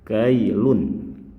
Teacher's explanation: Sebelum dipertemukan dengan ya tasydid berbunyi kailun, berakhiran bunyi n yang jelas, kailun. Setelah dipertemukan dengan ya tasydid, cara pembacanya berubah menjadi kailuya.